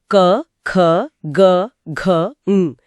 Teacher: क वर्ग के सभी अक्षर क, ख, ग, घ, ङ इनकी ध्वनि सीधे कंठ से आती है, सीधा गले से। हाँ, हवा फेफड़ों से निकलती है और गले में ही रोक दी जाती है।